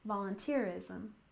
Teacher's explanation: volunteerism with stress on the third syllable